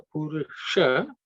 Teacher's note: the Sha is cerebral Sha with tip of the tongue pointed upwards